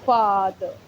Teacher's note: Long vowel sounds pronounced in back of vocal tract and the tongue in completely opened of the mouth and lip is spread.